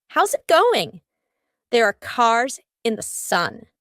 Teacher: In each of these words, the S becomes a Z.